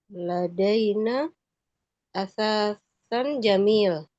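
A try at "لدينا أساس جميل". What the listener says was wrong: Asasun dhamma.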